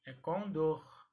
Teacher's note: na hora de pronunciar esta palavra é a sílaba mais forte era a última então e se pronuncia com dor e não condo então a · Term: palavra oxítona, oxítona